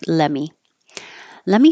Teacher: let me drop the T and it sounds like let me let me finish my sentence